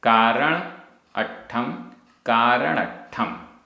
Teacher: संयुक्त अक्षर से पूर्व जो दीर्घ स्वर होता है वो भी ह्रस्व हो जाएगा छोटा हो जाएगा